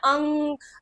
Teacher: अनुस्वार में क्या होता है? नाक से उच्चारण होता है।